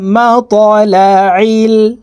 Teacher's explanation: এই ত হরফ কলকলার হরফ উপরের দিকে ধাবিত করে ধাক্কা দিয়ে উচ্চারণ করতে হবে